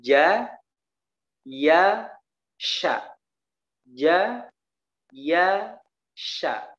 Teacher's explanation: Jadi ja, ya, sya. Tengah lidahnya naik ke atas. Nah, huruf sya ini memiliki sifat tafasyi.